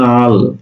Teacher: লাল শব্দের দুইটা ল ছিল সম উচ্চারণের দুইটা ধ্বনি ছিল সেই লালটা হয়ে গেল নাল